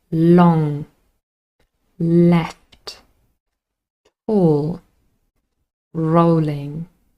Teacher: the tip of the tongue on the Alva Ridge and the air flows out on the sides · It's a voiced lateral approximant. · The tip of the tongue has clear contact with the alveolar ridge.